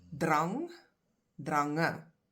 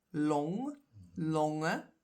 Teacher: the emphasis is on the last part of the word that contains a vowel, the last syllable with a vowel